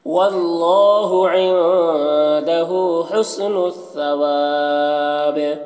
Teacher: کریں گے تو با کا زیر سکون سے بدل جائے گا، تو با میں قلقلہ ہوگا اور یہاں پر مد عارض وقفی بھی ہوگا